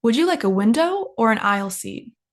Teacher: when we're given two options the first option goes up and the second option goes down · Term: intonation